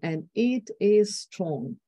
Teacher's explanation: deceleration of tempo stress on each word